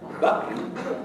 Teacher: I will pronounce that t not as a t but as a glottal stop and it means my vocal folds come together and then release uh rapidly